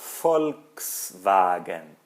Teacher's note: O V em alemão tem som de F, na maior parte das vezes.